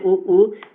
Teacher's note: ओष्ठ होता है ना, जब हम बोलते हैं उ यानी हमारा ओष्ठ जो हो, ओष्ठ जो है गोल हो जा रहा है ना